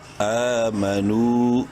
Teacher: واو مدہ ہے، نون کو بھی ایک الف کے برابر لمبا کریں گے۔ آمنو، الف سائلنٹ ہے۔